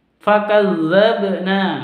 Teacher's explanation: Nah ini qalqalah juga, karena huruf ba sukun.